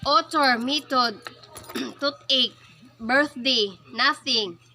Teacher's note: The dental fricatives. Voiceless dental fricative.